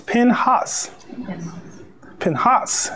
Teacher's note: the accent is on the second syllable